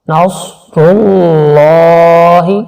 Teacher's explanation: صوت کو موٹا کریں گے اور را کے اوپر پیش ہے اس کو بھی موٹا کریں گے، اور لفظ اللہ سے پہلے اگر پیش ہو تو لفظ اللہ میں جو لام ہوتا ہے اس کو بھی موٹا کیا جاتا ہے۔